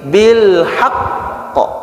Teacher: bil haqq ketika waqaf itu dia bertasdid, ada tanda tasdidnya. Maka ditahan dulu. Jangan cepat-cepat bil haqq, tapi bil haqq.